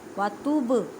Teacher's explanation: با ساکن ہے, کلکلا کریں. کلکلا کا مطلب ہے ہلا کر پڑھنا.